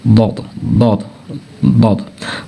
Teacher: üst azı dişlərin içəri hissəsinə toxundurmaqla qalın şəkilli tələffüz eləyir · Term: Dad hərfi